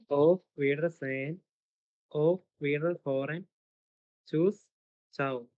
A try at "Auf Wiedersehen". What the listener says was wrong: ഓഫ് അല്ല, ഔഫ്. ഔഫ്.